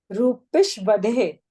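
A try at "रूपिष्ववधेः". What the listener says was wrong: नहीं दो बार व है ना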